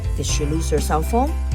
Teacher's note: A low rising tone like did she lose her cell phone?